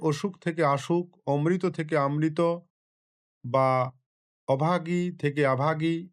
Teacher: শব্দের আদি অক্ষরের শ্বাসাঘাত ও স্বরধ্বনির দীর্ঘীভবন ঘটেছে · শব্দের শুরুতে অ এর পরিবর্তে আধ্বনির প্রাধান্য দেখা গেছে।